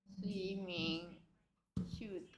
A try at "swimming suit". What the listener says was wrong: Shoot이 아니고 suit. Shoot이 아니고 뭐 공차냐? Swimming suit. 왜 자꾸 shoot이야? Suit 못해 수 해라 수수수 suit. 입술을 동그랗게 만드는 게 아니고 양치할 때처럼 이 하고 suit 해봐 suit. Suit. Swimming suit.